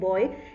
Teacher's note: इसमें एक ही vowel है लेकिन sound दो vowels की हैं, तो ये diphthong कहलाएगा